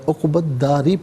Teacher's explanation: را کے نیچے زیر را کو باریک پڑھیں گے